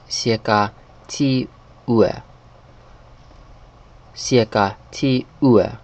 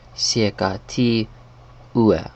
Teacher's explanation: So they drop this middle G sound like in day here.